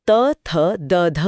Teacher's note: जीभ और आगे खिसक कर ऊपरी दांतों से टकराती है जिससे त वर्ग त थ द ध निकलता है।